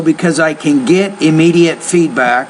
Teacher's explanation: So because I can get, this is a sentence rhythm issue. When you have can and then get, you want to put more stress on the main verb, less stress on the modal.